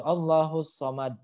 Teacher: dia tebal pangkal lidahnya naik itu kan ya Ini belakang lidahnya tuh naik jadinya full Kalau misalkan gak naik dia bacanya jadinya soal ah